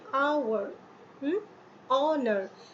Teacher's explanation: আওয়ার, অনার, অ, আ, এগুলো কি vowel sound করছে না? যদিও এইচ কনসোনেন্ট, এইচ দিয়ে এই শব্দগুলো শুরু হচ্ছে, কিন্তু সাউন্ড করছে ভাওয়েল। ভাওয়েল সাউন্ড করার জন্য আমাদের এখানে এ দিলে চলছে না, যদিও এইচ দিয়ে শুরু হচ্ছে, এ দিলে চলছে না, দিতে হচ্ছে অ্যান, অ্যান অনার।